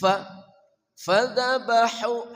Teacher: ha dari tengah kerongkongan